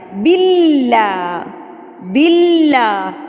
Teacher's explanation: یہ جو اللہ لفظ کے اوپر تشدید بنی ہوئی ہے نا، اس کو مضبوطی سے ادا کرنا ہے۔ باللہ، باللہ، لام باریک، باللہ، اعوذ باللہ یہاں پر آ جاتا ہے شین، اور شین کے اوپر تشدید، تو آپ نے اس کو مضبوطی سے، شین کا لفظ مضبوطی سے ادا کرتے ہیں، ٹھیک ہے؟